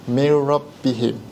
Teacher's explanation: masukkan nun tanpa dengung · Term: idgham bila runah